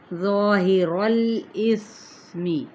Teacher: ظا حروف متعالیہ میں سے ہے اس لیے الف اس کے تابع ہو جائے گا، الف بھی ساتھ ہی موٹا ادا کیا جائے گا